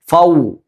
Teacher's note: 2 ചുണ്ടുകളും maximum മുൻപിലേക്ക് കൂർപ്പിച്ചുകൊണ്ട് ആ 2 ചുണ്ടുകളിൽ നിന്നാണ് വാവ് പുറപ്പെടേണ്ടത്.